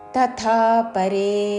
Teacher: తథా ముందు అల్పప్రాణత తర్వాత మహాప్రాణత దీర్ఘముతో